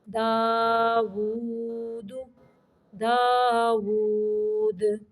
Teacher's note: یہاں پہ دال کو قلقلہ کرنا ہے یعنی حرکت دینی ہے۔